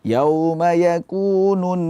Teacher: tahan sebentar suaranya di ghunah masukkan dengung suara ke hidung